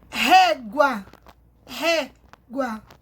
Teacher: O acento agudo, ele abre o som da vogal. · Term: som aberto